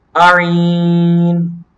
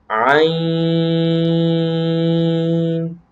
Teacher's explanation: اچھا اس میں کچھ لوگ کر لیتے ہیں آئین. آئین نہیں، حمزہ نہیں ہے عین سے پہلے. یہاں پر آپ کو نظر بھی آ رہا ہے اس کے پیچھے کوئی حمزہ نہیں ہے، تو آپ نے اس کو عین اس طرح ادا کرنا ہے.